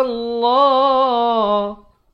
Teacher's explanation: Ini lafaz jalalah dibaca tebal 2 harakat.